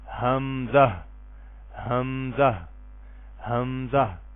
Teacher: یہ جو حمزہ ہے نا، پڑھتے ہوئے شروع میں بھی اس میں ہا آئے گی اور آخر میں بھی ہا ہوگی، لیکن ساکن ہا۔